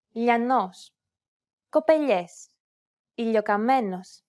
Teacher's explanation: The key point is to make the tongue flat, much flatter than the regular L, and instead of using the tip of the tongue as you normally would, try to use the middle part of your tongue to contact the roof of the mouth. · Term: Spanish L